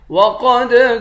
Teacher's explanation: قاف کو موٹا پڑھیں گے، قاف کے بعد دال ہے، دال پر قلقلہ کریں گے